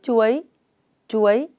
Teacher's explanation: Tiếng chuối có âm đầu chờ, vần uôi và thanh sắc. Vần uôi được đánh vần và đọc trơn như sau: uo i uôi, uôi.